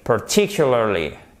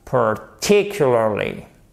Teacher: Voyez, l'accent tonique est sur cette deuxième syllabe.